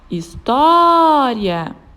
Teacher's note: paroxítona é uma palavra que tenha penúltima sílaba como sílaba tônica Ou seja a sua penúltima sílaba é aquela que é pronunciada com mais força · História. A sílaba tônica da palavra história é o tó, e ela está na penúltima sílaba da palavra. Então, ela é paroxítona, pois as palavras paroxítonas são aquelas que a penúltima sílaba é a sílaba tônica. · a sílaba tônica da palavra história é o pó e ela está na penúltima sílaba da palavra